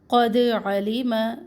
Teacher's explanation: दाल पर कलकला करे, क़ौफ मोटा पड़े